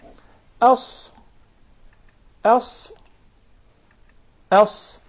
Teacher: the letter Sad comes from the tip of the tongue and the palates of the two top front incisors at a point just above the two front lower incisors. That is similar to the Zay and the Sin.